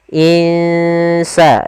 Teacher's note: Bagaimana cara membacanya kita samarkan nunnya ke huruf Sin · Kita samarkan nunnya ke huruf sin. Insa, dan itu ikhfa-nya ikhfa tipis.